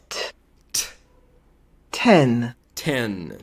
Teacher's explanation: Tá vendo que é um T aspirado, é um T cuspido.